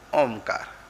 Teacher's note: और इसको जब हम उच्चारण करेंगे तो मुंह बंद करना पड़ेगा। मुंह बंद करके तब नाक से स्वर निकलेगा, ओमकार। ओम के ऊपर जो बिंदी है वो यही है। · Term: अनुस्वार